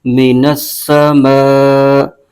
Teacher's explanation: حروف مدہ کے بعد حمزہ اسی کلمے میں آ رہا ہے تو یہاں مد متصل ہو رہی ہے، اس کو 2.5 الف کی مقدار لمبا کھینچیں گے۔ اس کے ہجے یوں کریں گے، میم زیر می، نون سین زبر نس، مینس، سین زبر سا، مینس، میم الف زبر ما، من السماء، حمزہ زیر ای، من السماء۔